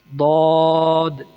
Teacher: زبان کی کروٹ اور اوپر کی داڑھوں کی جڑ سے۔ کروٹ سے مراد آپ دائیں یا بائیں کسی بھی جانب داڑھوں کے ساتھ ملا کر بول سکتے ہیں۔